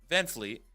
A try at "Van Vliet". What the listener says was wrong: No, it's Vliet. There's no F. It's Van Vliet. There's not an F. There's no F. Fred Van Vliet. It's not Fred Van Fleet.